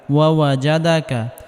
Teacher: জিমকে নরম করে পড়তে হবে অর্থাৎ জিহ্বার মধ্যখান উপরের তালুর সঙ্গে লাগিয়ে নরম করে পড়তে হবে শক্ত করলে বাতাস বের হবে বাতাস বের হলে সিন হয়ে যাবে